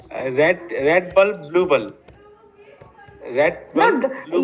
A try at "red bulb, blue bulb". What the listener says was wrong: you can say, but don't take long pauses. You have to say it speedily.